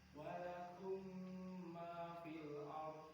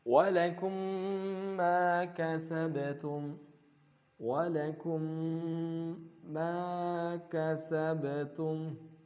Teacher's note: Ya, dibaca mutamatsilain, dimasukkan ke mim setelahnya idgham, disertai dengan ghunnah kamilah.